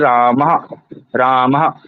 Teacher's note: रामः राम में हम विसर्ग लगाते हैं इस प्रकार से तो अंतिम जो विसर्ग है उसका उच्चारण कहां से होगा गले से होगा